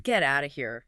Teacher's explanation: The tone is everything. You have to say it with a high rising intonation. Right. Because if you say with a low flat voice, it sounds like you're actually telling the person to leave the room.